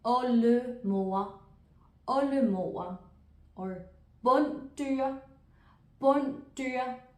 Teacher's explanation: When it comes after an L or an N, the D in this case disappears completely.